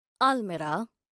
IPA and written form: ˈælmɪraː (almirah)